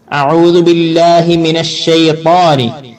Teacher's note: താവ് പറയുമ്പോ നല്ല ശബ്ദഗതി മേലോട്ട് നാവിന്റെ മൊരടും നടുവൊക്കെ പൊങ്ങി നിൽക്കും. ഷെയ്ത്താ നടുവും അണ്ണാക്കിലേക്ക് ചേർന്ന് നിൽക്കും.